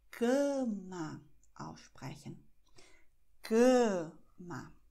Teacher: CA eher mit der Nase, und MA, offen.